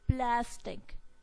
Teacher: So the stress is on the pla syllable.